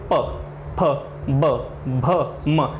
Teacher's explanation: इन वर्णों का उच्चारण करते समय आपके जो ओष्ठ हैं यानी होंठ हैं आपके, वो एक दूसरे को स्पर्श कर रहे हैं। इसका मतलब है कि इन वर्णों को जो प वर्ग के अंदर आ रहे हैं, हम बिना होठों का प्रयोग किए हुए इन वर्णों में से किसी भी वर्ण का उच्चारण नहीं कर सकते हैं।